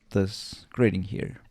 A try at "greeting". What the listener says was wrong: This greeting here. So actually grading and then greeting. Greeting. It's a very slight difference.